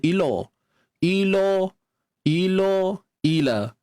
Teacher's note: Macam biasa lam ni nipis. Kalimah lam pada kalimah Allah ni baru tebal.